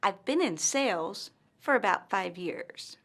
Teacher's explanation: pauses after the word sales and five years